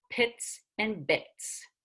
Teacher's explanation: these are stops that use two lips